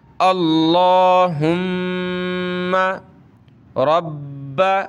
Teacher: با کو سخت کر رہے ہیں تشدید کی وجہ سے